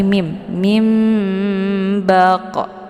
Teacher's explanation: nah nun sukun bertemu dengan ba ini dinamakan dengan iqlab maka nun-nya sudah jelas dibalikkan kepada bunyi mim · terbentuk suara yang mendengung lebih kurang 2 harokat